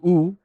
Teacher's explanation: the u sound is already at the back of your mouth but you kind of have to round your lips to produce it